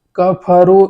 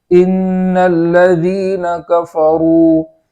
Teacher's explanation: فا کو اس طرح ادا کریں گے کہ وہاں آواز جاری ہو، کفرو اس طریقے سے نہیں پڑھیں گے۔